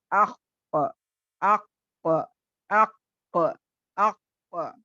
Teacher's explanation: साँस बिल्कुल जारी नहीं होगी, सिर्फ़ आवाज़ की बुलंदी रहेगी, आवाज़ का स्ट्रेंथ रहेगा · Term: जहर